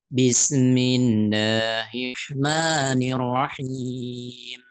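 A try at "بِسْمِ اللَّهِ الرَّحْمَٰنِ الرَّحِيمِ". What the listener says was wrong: Bisnya ketika sin sukun, jangan sampai ada se-nya. Bis enggak? Bismi. Jadi sinnya disempurnakan, baru ke mi supaya tidak terjadi mantul. Bismi.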